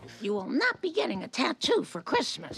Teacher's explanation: Notice that this phrase is said with elements of connected speech in it. The T for not is dropped and the A is pronounced as a schwa sound, Also, the T in Christmas is not pronounced, so we hear Christmas.